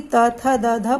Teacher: जीभ है ना वो दांतों का सहारा लेती है और प्राणवायु किससे टकराती है? दांतों से। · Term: दंत व्यंजन